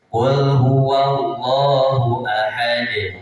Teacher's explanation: Ahad di akhir itu ada sukun qalqalah, jadi dipantulkan.